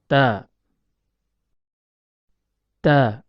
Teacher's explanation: Huruf ta keluar dari tempat pertemuan antara ujung lidah dengan pangkal gigi seri atas.